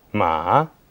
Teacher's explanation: The third tone is falling, then rising